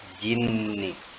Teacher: disebut dengan gunah yaitu Nun bertasydid dibaca berdengung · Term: gunnah